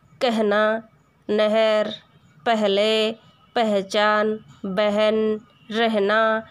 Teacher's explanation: ह के पहले आने वाले अ का ए, जैसे कहना, नहर, पहले, पहचान, बहन, रहना।